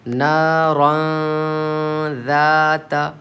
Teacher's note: نون اس کی آواز کو ناک میں چھپا کر پڑھیں گے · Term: اخفا